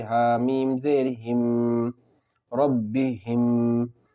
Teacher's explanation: میم ساکن کے بعد میم ہے، غنّے کے ساتھ پڑھیں گے